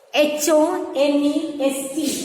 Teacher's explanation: So here, the H is silent here.